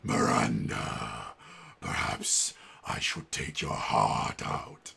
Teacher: he's using a technique called vocal fry